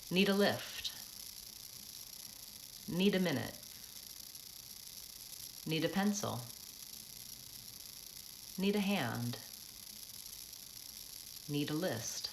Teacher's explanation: I'm going quickly on need a and stretching out the second word.